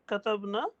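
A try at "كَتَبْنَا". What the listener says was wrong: ना बोलना था, खींचना, थोड़ा लंबा करना, नहीं तो फिर वो अलग हो जाती।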